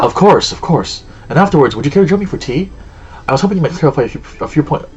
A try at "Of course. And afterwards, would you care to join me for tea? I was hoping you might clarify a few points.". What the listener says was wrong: Slow down. Slow down and open your mouth.